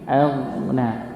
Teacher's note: Bukan aghna, bukan aghna tapi aghna. Ditebalkan, huruf ghainnya tebal. Walaupun dalam keadaan sukun dia tetap tebal. Hamzahnya yang tipis, ghainnya yang tebal.